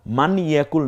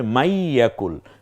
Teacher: প্রথমে এসেছে তারপরে তার দ্বিতীয় অক্ষর এসেছে ফলে এখানে আমরা এই যেমন সূর্য উদিত হলে চাঁদের আলো থাকে না আলো আলো আছে চাঁদের কিন্তু সূর্য উদিত হলে যেমন তার আলো থাকে না ঠিক তেমনি তাজদিদ আসার সাথে সাথে জজমলা অক্ষরটি আর উচ্চারিত হয় না · জজমওয়ালা অক্ষরের পরে তাসদিদওয়ালা অক্ষর আসলে জজমওয়ালা অক্ষরটি উচ্চারিত হয় না।